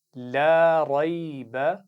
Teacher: रा को मोटा पढ़ेंगे, इसका ख्याल रखना है। बा पर ज़बर है तो उसको खींचेंगे नहीं।